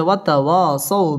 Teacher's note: তাবাই জবরের বাম পাশে খালি আলিফ একালিফ টেনে পড়তে হবে ওয়াতাওয়াসাউ জবরের বাম পাশে জজম ওয়ালা ওয়াও লিনের হরফ তাড়াতাড়ি পড়তে হবে